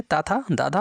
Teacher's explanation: ता था दा धा वर्णों का उच्चारण स्थान है इन वर्णों का उच्चारण स्थान दंत हो जाएगा